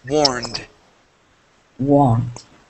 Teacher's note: This word here, warned. Okay, so we're going to go from that N right to the D sound